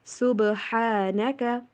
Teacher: با کے اوپر کلکلا کیجئے. صبح اور ہا کی آواز کلیئر ہونی چاہیے، ہا نہیں.